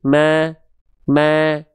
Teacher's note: dengan kita tersenyum seperti itu, lidah kita akan lebih rileks dan rongga mulut atau aula mulut kita akan lebih terbuka sehingga karakter vokal A yang dihasilkan adalah tipis yang kita maksud.